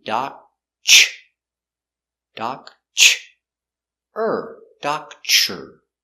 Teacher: when you have TR together, it makes the chicken sound, ch.